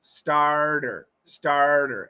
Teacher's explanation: it's a flap T so you got to get that it's got to be fast